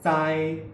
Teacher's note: In the word 在, the tongue tip stays down as the teeth come together.